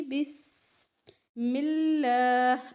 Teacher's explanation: اب دیکھیں بس جو ہے، بس سین پہ آواز چلے گی. بسم اللہ، اللہ کے لام کو باریک پڑھیں گے چونکہ اس سے پہلے زیر ہے